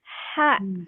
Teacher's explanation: Jadi ada aliran udaranya dulu di awal. Jadi sifatnya itu di awal gitu.